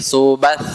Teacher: sifatnya yaitu Hames itu berdesih atau napas berhembus suara tidak tertahan